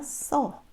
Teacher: 쓰다가 어미를 만났을 때 모음인 의가 탈락되죠. 자, 어간에서 의가 탈락되는 겁니다.